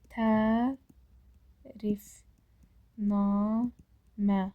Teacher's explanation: Tərifnamə həm ə uzanır, həm də namədə A uzanır.